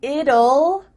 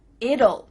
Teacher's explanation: we kind of add a little u sound before the L it kind of sounds like ull